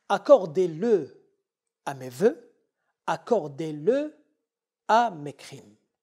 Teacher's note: Ce qui nous ramène à parler d'une autre règle, le E du pronom le, après un verbe à l'impératif, ne peut être élité, surtout en français moderne. Lorsqu'on a un verbe à l'impératif, le E du le ne tombe pas. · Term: hiatus